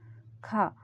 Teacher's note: क ख में हवा ज्यादा निकल रही है तो यह महाप्राण है